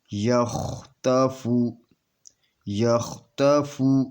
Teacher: یہ خا مموسا ہے، اس کے اوپر ٹھہراؤ ہے، یہ اپنے مخرج میں اس کی آواز جاری رہے گی · یہاں پہ قلقلہ صغرا ہوگا، یعنی چھوٹا قلقلہ ہوگا، کیونکہ یہ کلمے کے درمیان میں ہے